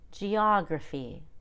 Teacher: make sure the y at the end of gruffy is a complete long e it'll be low pitch but it's still a long e